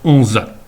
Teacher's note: le son JE peut carrément disparaître dans la prononciation. Ainsi, la ville de Jonzac en français, qui va se dire Onzat, en chérantais et en saintongeais de manière générale, peut aller jusqu'à faire disparaître le J du début et faire Onzat.